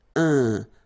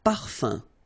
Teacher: So it's nasal and it's un. So it really goes in your nose. You don't pronounce the M at all.